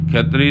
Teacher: ਖਖੇ ਦੇ ਪੈਰ ਵਿੱਚ ਈਆ ਹੈ ਸੋ ਉਚਾਰਨ ਹੈ ਖਤਰੀ ਸਬਦੰ ਖਤੇ ਨੂੰ ਬਿਲਕੁਲ ਖੁਲਾ ਕਰਕੇ ਨਹੀਂ ਬੋਲਣਾ ਹਲਕਾ ਜਿਹਾ ਉਹਦੇ ਪੈਰ ਵਿੱਚ ਈ ਦਾ ਸਹਾਰਾ ਲੈ ਕੇ ਬੋਲਣਾ